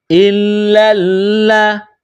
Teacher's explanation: لام مشدد ہے، تو لام کو سختی کے ساتھ جماؤ کے ساتھ پڑھیں گے۔